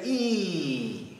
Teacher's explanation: e has a lot of tension in it the tongue is very high in the back of the throat the throat starts to close off slightly and the lips become really tight as does the jaw on